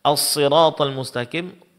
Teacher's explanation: huruf shad dalam pengucapannya ditebalkan